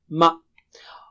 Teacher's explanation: دونوں ہونٹوں کے باہری حصے کو ملانے سے میم ادا ہوتا ہے